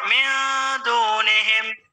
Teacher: Kalau ikhfa itu menyamarkan suara nunnya itu. Jadi seolah-olah kadang kayak eng gitu ya. Eng. Midunihim.